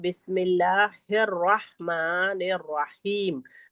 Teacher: तो दोनों र को हम पुर पढ़ेंगे